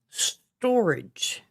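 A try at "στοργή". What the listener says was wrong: No, there's no A.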